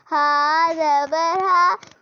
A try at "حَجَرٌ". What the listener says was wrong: ہا نہیں حاج ملاؤ بنا. حاجا. اپنے ہا سے حجرن. جیم. جیم زبر جا.